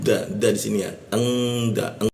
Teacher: kita dengungkan di huruf da kita tahan dua ketukan